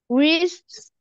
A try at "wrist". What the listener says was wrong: خلي بالك، خلي بالك ال W هنا silent. ال W أحيانا، أحيانا لما بتيجي في أول الكلام أحيانا نقراها وأحيانا بتبقى silent. ال W هنا silent، يبقى هنبدأ من الحرف اللي وراها.